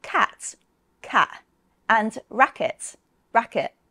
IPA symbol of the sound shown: kæʔ